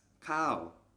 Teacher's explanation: Altogether that's kao with the falling tone